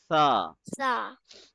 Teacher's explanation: where do we place our tongue in sa? At the tip of the upper teeth.